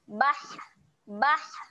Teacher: Nak keluar angin tu kat mana? Waktu keluar angin tu kita tekan dekat tengah kerongkong. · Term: huruf ha